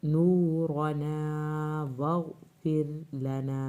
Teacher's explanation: ये वाला रा पतला पढ़ना है क्योंकि पीछे ज़ेर आ गई है